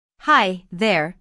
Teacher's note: notice the intonation in this greeting it rises After High and Falls after there